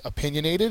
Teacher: opinionated is an adjective it's the second syllable that is accented